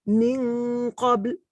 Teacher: I'm more giving the nasal sound on the letter that follows the N.